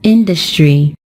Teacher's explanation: It is stressed on the first syllable, and we pronounce it as industry.